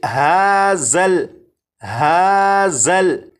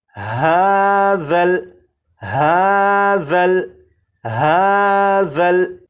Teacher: اب اس لفظ کو پڑھیں گے، اور اس لفظ میں یہاں پر دیکھیں یہ ذال ہے، ذال کو نرمی سے پڑھیں گے، یعنی سی ٹی کی آواز کے بغیر پڑھیں گے، اور اس حرف کی سی ٹی کی آواز کو ختم کرنے کے لیے زبان کی نوک کو اوپر کے سامنے کے 2 دانتوں کے سرے سے جب لگائیں گے تو ذال کے اندر جو سی ٹی کی آواز ہوتی ہے وہ ختم ہو جائے گی۔ اب اس لفظ کو اس طرح سے نہیں پڑھیں گے ہازل ہازل، اس طرح سے نہیں، بلکہ ہاذل ہاذل ہاذل، 4 مرتبہ۔